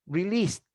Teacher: no vibration of a vowel chord because has no vibration so you have to pronounce the final e d like a t